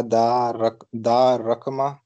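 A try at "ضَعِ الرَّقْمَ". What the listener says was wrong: दाइर रकमा। अलिफ लाम है यहाँ पे।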